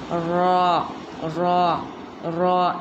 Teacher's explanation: इसका मखरज है ज़बान के किनारों की पुश्त और मुकाबिल के मसोड़ों से, यानी थोड़ी मुड़ेंगे अपनी इसमें ज़ुबान, और जो साइड की जो मुड़ने का हिस्सा है तो वो अपने ऊपर के दांतों के मसोड़ों में लगेगा।